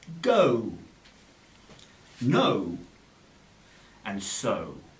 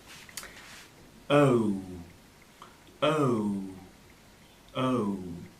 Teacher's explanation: of two vowel sounds that are pronounced within the same syllable the o sound is a combination of uh and the uh or ooh sound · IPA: əʊ